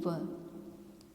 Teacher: कंठ तालव्य, जहाँ पर कंठ तथा तालु से जिनका उच्चारण होता है, इसीलिए इन्हें कंठ तालव्य कहते हैं, जैसे ए और आई। और दंतोष्ठ्य यानी जिनका उच्चारण करते समय दांत और ओष्ठों की सहायता लेनी पड़ती है